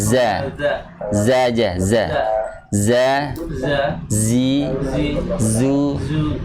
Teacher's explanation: ujung lidah bertemu dengan dinding gigi seri bawah sama dengan huruf sin, shad sama tempatnya di situ satu makhraj